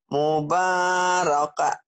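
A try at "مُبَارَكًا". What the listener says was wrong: Kenapa mubaraka? Mubarakan. Kecuali dihentikan ya. Kalau dihentikan, mubaraka. Jadi panjang betul.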